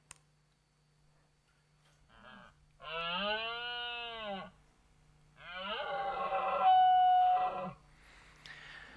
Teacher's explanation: And here we see an example of a nasal grunt at the beginning, followed by a modal phonation, which is kind of normal voice for a deer, followed by a chaos, and then going into, again, a mode change.